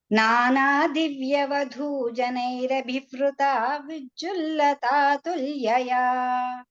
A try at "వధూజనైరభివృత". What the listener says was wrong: అక్కడ అభివృత అన్నప్పుడు వృత కాదు, అది వట్రసుడి ఉంది కాబట్టి మృదువుగా అభివృత అని ఎంత మృదువుగా వీలైతే అంత మృదువుగా పలుకుతాం అన్నమాట. వధూజనైరభివృత, చూడండి నన్ను చూడండి, వధూజనైరభివృత అంతే,